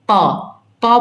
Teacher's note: आप एक बार प बोलकर देखो दोनों होठ आपके क्या हो रहे हैं सट रहे होंगे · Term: ओस्ट